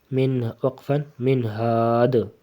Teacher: دال کے اوپر سکون آ جائے گی تو قلقلہ کریں گے